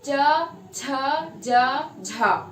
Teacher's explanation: जिन व्यंजन ध्वनियों के उच्चारण में जीभ के मध्य का भाग पैलेट यानी तालू को टच करता है और ध्वनियां उच्चारित होती है